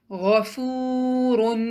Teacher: واو پر سکون کا نشان ہے اور اس سے پہلے ضمہ ہے، تو ہم فا کو 2 کاؤنٹ لمبا پڑھیں گے